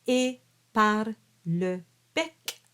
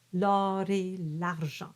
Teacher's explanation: So you pronounce all your R's, l'or et l'argent. So I've exaggerated the R so you can hear it, but it's just a flip.